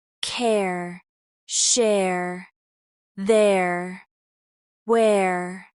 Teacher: For pronunciation accuracy, let's revisit the air sound in words like care, share, there, and where. This is a combination of a short vowel followed by a strong R.